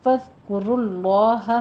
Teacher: ذال کے اوپر نرمی رکھیے، سیٹی کی آواز نہیں آنی چاہیے. کاف کے اوپر ہونٹ گول کر لیجئے، ضمہ ہے.